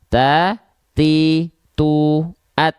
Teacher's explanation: Jangan sampai berlebihan ya. Kadar nafasnya hanya berupa percikan nafas saja.